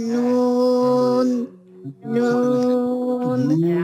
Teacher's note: জিহ্বার আগা তার বরাবর উপরে তালুর সাথে লাগাইয়া নুন। হ্যাঁ, এই নুন উচ্চারণ করতে কিন্তু দাঁতের গোড়ার সাথে লাগানো যাবে না।